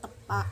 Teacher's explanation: Pengucapan bunyi ini dengan mengulangi arus udara dari paru-paru. Arus udara dihalangi oleh ujung lidah yang menempel pada lekung gigi. Langit-langit lunak menutup jalan udara ke rongga hidung. · kontoid plosif, apiko alveolar, tak bersuara dan tak beraspirasi. Pengucapan bunyi ini dengan mengulangi arus udara dari paru-paru.